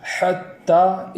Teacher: حتی میں تا پر جو کھڑا زبر ہے اس کو ایک الف کے برابر کھینچ کر پڑھیں گے